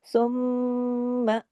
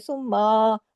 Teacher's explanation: کے اوپر کھڑی زبر ہے، الف کے برابر کھینچیں گے، ثم، میم پہ تشدید ہے، بڑا غنہ ہوگا، اکمل غنہ ہوگا، آواز دیر تک ناک میں چھپے گی